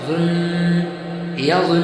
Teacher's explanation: ظن میں نون مشدد میں 1 الف کا برابر غنہ ہوگا۔ ناک میں تھوڑی دیر آواز کو روکنا غنہ کہلاتا ہے۔ غنہ کی مقدار 1 الف کے برابر ہے۔